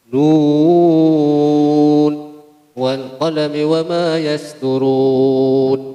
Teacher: yasturuna, ini dibaca panjang satu alif, dua alif atau tiga alif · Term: mad arid disukun